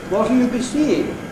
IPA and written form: w.ɒ.t.l j.u b.i s.iː.ɪ.ŋ (What'll you be seeing?)